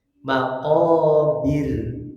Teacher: ro yang kedua di ayat kedua karena waakaf sukunnya itu harus dibaca tipis karena sebelumnya kasrah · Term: ro karena tipis